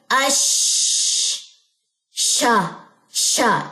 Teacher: शीन की आवाज का फैलना जो कि उसके मखर से शुरू होता है यहां तक के यह ऊपर के दांतों की अंदरूनी सतह से जा टकराता है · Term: तफी